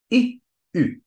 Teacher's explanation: The ü is an I plus lips in front. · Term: u-umlaut